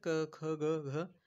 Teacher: कंठव्यंजने म्हणजे कंठातून आपल्याला जेव्हा आपण उच्चार करतो तर कंठातून उच्चारलं जातं.